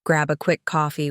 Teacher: with stress on grab and coffee, before I head downtown, with a smooth fall in tone at the end.